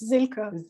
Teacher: It's a voiced, the fricative z at the beginning and it's a schwa and so it's Silke.